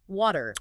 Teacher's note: In American English, the T becomes very soft. It sounds almost like a D. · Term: flapping